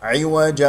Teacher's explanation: عوج، كسرة العين عميق من وسط الحلق، عوجا وهم بالآخرة كافرون. تنوين مع الواو إدغام، ميم مع الباء إخفاء شفوي. بالآخرة هنا لدينا مد بدل مقدار حركتين، اكسر الباء جيدا.